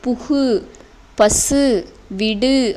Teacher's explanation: தனி குறில் எழுத்தை அடுத்து வரும் வல்லின உகரங்கள் ஒரு மாத்திரை அளவுக்கு முழுமையாக ஒலிக்கும் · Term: முற்றியல் உகரம்